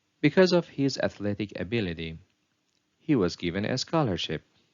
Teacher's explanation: here the pitch Rises and falls on the word ability and on the word scholarship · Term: non-final rising falling Contour